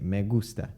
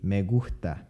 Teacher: the non-aspirated the aspirated and the omitted s